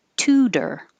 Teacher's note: And that second T stays a T because it's in the stressed syllable. The T will change to D when it's between two vowels and in the unstressed syllable